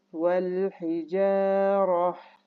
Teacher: vakıf yaparken vel hicarat demiyoruz. Ha harfine çevirip okuyoruz. Vel hicarah şeklinde okuyoruz.